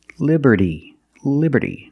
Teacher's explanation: we see that t in Liberty is between vowels so it's pronounced like a fast D